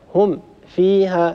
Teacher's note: وهنا وقع في خطأين، الخطأ الأول أن هناك فاصل صوتي بين الميم الساكنة وبين الفاء، هم فيها، لاحظوا هذا الفراغ الصوتي وهذا خطأ. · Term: فراغ صوتي